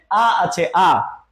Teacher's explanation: আ বললে একবারে কন্ঠের গোড়া থেকে হচ্ছে হ্যাঁ একবারে আমাদের এই শুরু থেকে হচ্ছে একবারে নিচ থেকে হচ্ছে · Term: নিম্ন